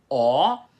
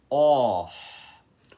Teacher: Primeiro você precisa fazer o O aberto com a boca e arredondado, e depois soltar o arzinho assim, que é a aspiração com a boca arredondada. Então você tem que fazer assim, O. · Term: O aspirado